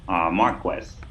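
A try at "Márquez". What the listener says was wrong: Marquez, close. Marquez. Tilde. Don't forget the accent. Tilde. Tilde.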